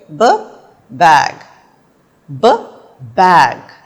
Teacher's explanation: जब आप ब की आवाज़ निकालते हैं तो आपके होंठ आपस में टकराते हैं और हलक से निकलने वाली आवाज़ हवा के प्रेशर से जब आवाज़ आपके होंठों से बाहर आती है, आपके मुंह से बाहर आती है, तो वो एक ब की आवाज़ प्रोड्यूस करती है।